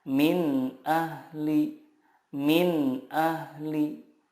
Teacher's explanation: huruf-huruf izhar di sini makhrajnya adalah dari tenggorokan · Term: izhar halqi